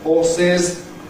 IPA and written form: ˈhɔːsɪz (horses)